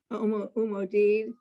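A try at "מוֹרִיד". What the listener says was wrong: Morid. It's a resh, then a dalid. No, a resh, umorid. A resh, a yud, then a dalid.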